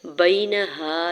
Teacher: یا ساکن سے پہلے با کے اوپر زبر یا لین ہو رہا ہے، نرمی سے موڑتے ہوئے ادا کریں گے، نون کے زبر کو بغیر کھینچے ہوئے ادا کریں گے۔